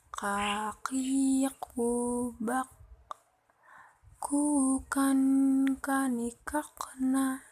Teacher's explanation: Melafalkan huruf k diucapkan dengan menyentuhkan pangkal lisan dengan langit-langit di bagian belakang dan diucapkan dengan mengeluarkan udara dengan lembut.